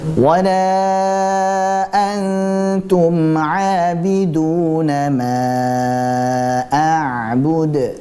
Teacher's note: Hendaklah kita bersiap-siap pada makhraj huruf ta, kemudian disertai dengan tempo gunah yang dipanjangkan. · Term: ikhfa hakiki